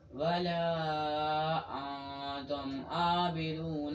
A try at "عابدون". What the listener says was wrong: عین نکالیے. ولا انتم عابدون. اور اچھی طرح عین کو. عابدون.